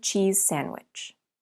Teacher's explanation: that means we can link The Sounds try saying cheese sandwich when you say the Z at the end of cheese your tongue is behind your top teeth leave your tongue there and change to S with without moving anything then say sandwich cheese sandwich it's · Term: linking